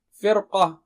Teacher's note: قاف جو ہے نا موٹا اونچا ہے تو اس کی تیاری میں را کو موٹا کر دیتے ہیں آسانی کے لیے، فرقہ بولنے کے بجائے فرقہ، را کو موٹا کر دیں۔